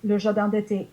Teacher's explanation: je ne prononce pas le N à la fin du mot jardin